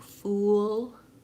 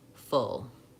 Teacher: Fool is the blue shoe vowel, that's tense, oo. And full is the good book vowel, that's lax. So both are back vowels.